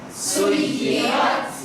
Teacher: سیرت. جی یا پہ سختی ہے لیکن موٹا نہیں ہے